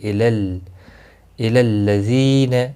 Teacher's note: ذی یا مدہ ہے، ایک الف کے برابر کھینچ کر پڑھیں گے۔ اس کو جلدی ادا کرنا ہے، الی لام کے ساتھ ملے گا، تشدید والا لام ہے۔